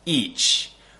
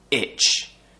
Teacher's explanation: and the mouth shape the two sounds are very very similar for the long vowel the tongue is higher as I said and for the short vowel the tongue is just below the top teeth so it's just near the sharp edge of the top teeth